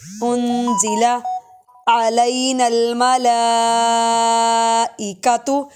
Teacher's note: انزل علینا عین کی پراپر آواز ہے انزل علینا الملائکۃ، لام پہ مد کھڑا زبر ہے، لمبا کریں گے اور مد بھی ہے